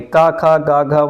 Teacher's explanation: जैसे क वर्ग में क, ख, ग, घ म ये सारे कंठ का स्पर्श करते हैं। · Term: स्पर्श व्यंजन